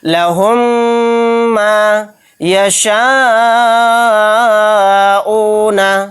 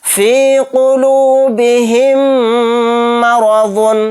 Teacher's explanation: میم ساکن کے بعد پھر میم آ گیا تو میم کو میم سے ملا کر غنہ کے ساتھ پڑھیں گے